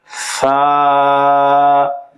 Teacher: জিহ্বার আগা সামনের উপরের দুই দাঁতের আগার সঙ্গে লাগিয়ে উচ্চারিত হয়।